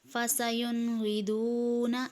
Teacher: اس میں نون ساکن کے بعد غین ہے، اس میں بھی اظہار ہو رہا ہے